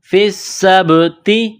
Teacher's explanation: سین میں سیٹی کی آواز پیدا کرنی ہے ، سین کو با کے ساتھ ملانا ہے، با ساکن ہے